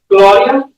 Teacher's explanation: Gloria is technically supposed to be a little bit more like aw, like Gloria.